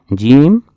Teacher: جیم کا مخرج ہے زبان کا درمیانی حصہ اوپر کے تالو سے لگ کر ادا ہوتی ہے